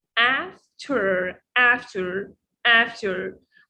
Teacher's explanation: the American R-colored vowel as in the word after